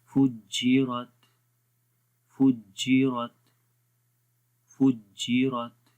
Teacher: है। और लास्ट में है फुज्जिरत, ता के अंदर आखिर में, ता के आखिर में सांस जारी रहेगा